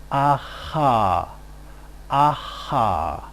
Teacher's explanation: the velar place of articulation involves a constriction between the velum and the tongue. A result would be aha, aha.